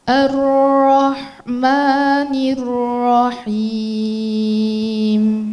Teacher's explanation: Mungkin banyak yang mikir ra, nir, rahim itu tipis, mulainya tipis karena sebelumnya ada kasrah, tapi ini salah. Ra-nya langsung tebal